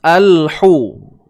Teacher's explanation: Huruf ha tengah kerongkong sempit kan.